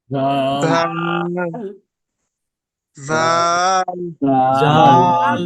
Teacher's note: জিহ্বার আগা এবং সামনের উপরের দুই দাঁতের আগার সঙ্গে লাগিয়ে উচ্চারিত হয়